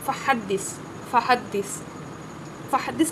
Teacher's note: اس میں آواز پست ہے لیکن سانس جاری ہے، اس کو بولتے ہیں ہمس